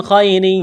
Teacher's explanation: نون ساکن کے بعد خواہ ہے، حروف حلقی ہے، تو نون ساکن پر غنہ نہیں کریں گے، آواز ناک میں نہیں چھپائیں گے، خواہ کو موٹا کرنا ہے۔ یا لین ہے، اس کو کھینچنا نہیں ہے، نرمی کے ساتھ پڑھنا ہے